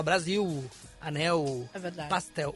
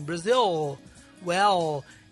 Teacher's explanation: o l por exemplo final no Brasil a gente pronuncia como u